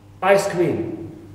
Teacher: the first part receives the primary stress it means ice is stressed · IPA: / 'aɪs kʰrɪːm /